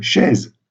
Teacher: Vous voyez que dans ce cas, ce S est un S sonore, donc au Moyen Âge, c'est un S qui était exprimé plutôt par un Z